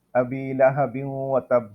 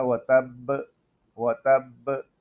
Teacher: اسی طرح یہ دوسرا کلمہ ہے وَتَب، یہاں پر جب ہم وقف کریں گے تو با میں قلقلہ ہوگا